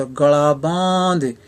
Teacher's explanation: ਇੱਥੇ ਸਪੈਲਿੰਗ ਭਾਵੇਂ ਉਹੀ ਹਨ, ਪਰ ਇੱਥੇ ਗੱਲਾਂ ਨਹੀਂ, ਇੱਥੇ ਗਲਾ ਪਾਠ ਹੋਏਗਾ। ਲੱਲਾ ਜਿਹੜਾ ਹੈ, ਇਸ ਦੀ ਇੱਥੇ ਲੂਜ਼ ਸਾਊਂਡ ਹੋਏਗੀ, ਪੈਰ ਬਿੰਦੀ ਵਾਲੀ ਸਾਊਂਡ ਹੋਗੀ